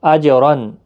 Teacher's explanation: جیم ساکن پر قلقلہ ہوگا اور پر پڑھا جائے گا، تنوین کے بعد حروف حلقی کا عین ہے، اظہار حلقی ہوگا، یہاں گنہ نہیں ہوگا۔